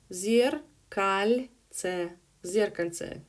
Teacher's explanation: zerkalce with the stress on the first syllable